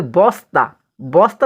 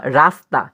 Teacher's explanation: রাস্তা শব্দের স উচ্চারণের সময় জীভের সামনের অংশ উপরের পার্টি দাঁতের মূলের খুব কাছাকাছি আসে। সেই হিসেবে ন এবং স ব্যঞ্জনকে দন্ত দন্তমূলীয় ন দন্তমূলীয় স বলায় বিজ্ঞান সম্মত।